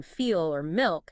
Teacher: when the L comes at the end of a word or syllable, like in feel or milk, it's usually pronounced as a dark L